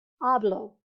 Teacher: notice it's on the second to last syllable so it's going to be on the ah hablo and we do have to count from right to left